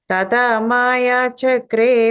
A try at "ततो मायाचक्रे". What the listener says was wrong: Second line, first word, tato. I think the second time you said tata, but tato.